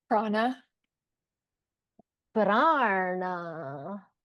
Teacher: You have to make sure you put your long ah and your na in the third mouth position